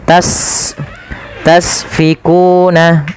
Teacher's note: sifat pertama hames ada sifat saofirnya berdesis ya